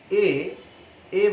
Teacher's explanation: এ বললে সামনের দিকে থাকছে কিন্তু একটু নিচে নেমে যাচ্ছে